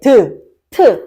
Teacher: 디귿, 티읕은 우리가 발음할 때 트, 어디를 건드려요? 잇몸을 건드려요. 앞니 뒤에 있는 단단한 트, 잇몸을 건드린단 말이야.